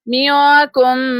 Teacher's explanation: منکم یہاں پر نون ساکن کے بعد کاف لیٹر ہے تو یہاں پر اخفا ہوگا،